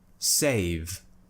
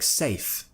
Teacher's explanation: I'm still producing a vibration in my throat. I'm still using my vocal cords. It's not just uh an unvoiced sound. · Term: voiced consonant